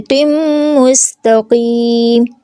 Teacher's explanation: تنوین کے بعد میم آ رہا ہے، میم مشدد، تو یہاں پہ ہم کیا کریں گے، ادغام اور اکمل گنہ کریں گے